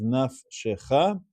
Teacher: nafshecha has two shevas in a row. The first one is silent. The second one is Sheva Na. So that is read as nafshecha.